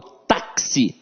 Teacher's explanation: Não, eu falo táxi. Então esse X aqui tem um som de KS. Ou seja, eu tenho 4 letras e 5 fonemas na palavra táxi.